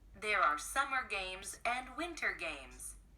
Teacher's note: Lẽ ra chúng ta phải nhấn âm đầu là summer, nhưng ở đây có cảm giác chúng ta sẽ đọc là summer games and winter games. Chúng ta sẽ nhấn âm ở cái chữ winter games.